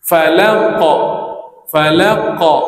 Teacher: qalqalah dilafazkan hampir kepada baris fathah secara mutlak. Sama ada huruf sebelumnya pada fathah atau kasrah atau dammah.